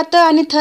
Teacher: त आणि थ चा उच्चार करताना आपले जिभेचा जो टोक आहे तो दाताच्या पाठीमागच्या साईडला टच करत असतो, तेव्हा हे दंत्यवर्ण असतात।